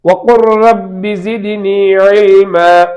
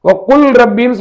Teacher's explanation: லாமை ராவுக்குள்ளே நுழைத்து விடலாம்